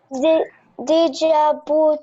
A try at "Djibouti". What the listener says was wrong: No, I said D will be silent. It's Djibouti. Every time we say this country, it's only Djibouti.